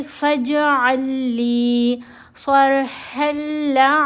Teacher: ये जो लाम है इसको हमने नहीं पढ़ना, ये मर्ज हो जाएगी मुशद्दद लाम के अंदर। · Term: इदगाम मसलैन